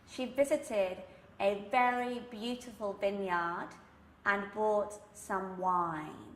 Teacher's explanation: So you can hear that my sound is very much resonating at the back, even though I do have these sounds which begin at the front of the mouth, the lips for the V and the B. My focus is still very much at the back.